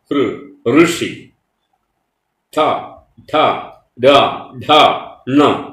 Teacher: തട്ടുന്ന ചില ശബ്ദങ്ങൾ ഉണ്ട് ഋ ഋഷി ഠ ധ ഡ ഠ ണ ശബ്ദം മൂർധാവിൽ പോയിട്ട് പ്രതിധ്വനിക്കും · ശബ്ദം മൂർധാവിൽ പോയിട്ട് പ്രതിധ്വനിക്കും. അങ്ങനെയാണ് ആ ശബ്ദം പുറത്തേക്ക് വരും. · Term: മൂർധന്യങ്ങൾ